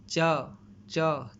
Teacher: जीभ का तालु से स्पर्श हो रहा है, तो इसलिए ये चवर्ग में आ गया और ये इसका जो उच्चारण स्थान है वो तुला है।